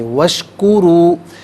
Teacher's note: واو مدہ ہے، ایک الف کی مقدار کھینچ کر پڑھیں گے